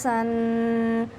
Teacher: سین آپ کا سیٹی کی آواز سے پڑھا جائے گا